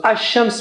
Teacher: Instead of saying Al-Shams, which is difficult to say, Lam is sacrificing its sound and giving its sound to Sheen, and it stays there. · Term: Shamsi letters